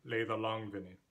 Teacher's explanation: And then you have line 3, which doesn't alliterate with the preceding lines, but is two stress syllables that alliterate with each other, leið and long. This probably has three stress syllables, leið, long, and vin.